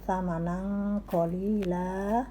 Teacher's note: Tanwin bertemu kof dibaca ikhfa, samar ya